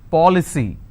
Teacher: I need to stress on the third from right, which means I will stress on paw. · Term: anti-penultimate